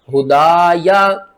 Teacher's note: ہا کو آپ نے حلق سب سے نیچے والے حصے سے ادا کرنا ہے، آواز بھاری آئے گی